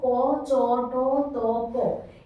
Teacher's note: এই বর্ণগুলো উচ্চারণ করার সময় অল্প বাতাস প্রয়োজন হচ্ছে, তাই এদেরকে বলা হয় অল্প প্রাণ